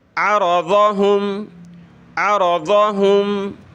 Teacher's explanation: ضاد کو موٹا کریں، عین کو گلے سے نکالیں، را کو بھی موٹا کریں زبر کی وجہ سے